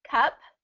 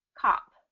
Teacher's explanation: the uh sound is a little bit more neutral ah is a little bit more dropped and hollow